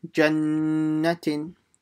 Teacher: So don't stretch anything, just do the gunnah on the nun.